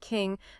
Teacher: Spanish has N sounds, but this specific velar nasal doesn't typically occur at the end of words in the same way, so it can be difficult.